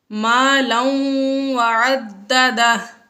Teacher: یہاں پر مَالًا تنوین کے بعد واو آ گیا حروف یرملون میں سے، تو اس صورت میں یہاں پر غنہ ہوگا